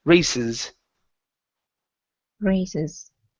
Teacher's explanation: this C is going to be an unvoiced S instead of raises